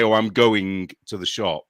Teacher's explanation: we also add a K on the end of our ing words. But it's hard to hear sometimes.